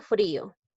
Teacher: ¿Por qué es hiato acentual? Porque hay dos vocales contiguas, dos vocales seguidas, la I es cerrada, la O es abierta y la I es la que suena más fuerte